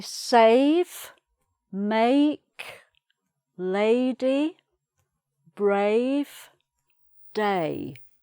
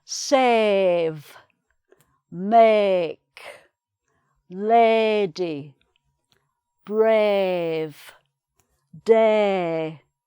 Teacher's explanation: in the northern accent it's a longer sound, and it's: "saave", "maake", "laady", "braave", "daay", so it's much sort of wider and, again, longer and darker.